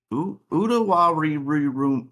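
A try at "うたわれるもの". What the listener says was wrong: I don't know why you're changing your pronunciation of the E's. It's Utawareru. Utawareru Mono.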